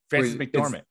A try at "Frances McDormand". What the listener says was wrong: There's a D on the end, not a T, but I like the idea of her like just kind of taking a nap for a little while.